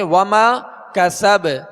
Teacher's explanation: با پر زبر ہے، جب ساکن کریں گے تو اس میں بھی قلقلہ ہوگا